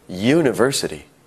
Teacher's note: university starts with a u a vowel however it sounds like it starts with a Y